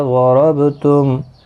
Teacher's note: ضاد حروف مستعلیہ ہے، پر پڑھا جائے گا، را زبر کی وجہ سے پر پڑھا جائے گا، با ساکن پر قلقلہ ہوگا